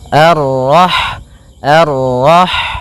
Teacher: sifat ha itu yang paling mencolok adalah sifat hamnya yaitu mengalirnya nafas ketika kita membacanya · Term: sifat hamsnya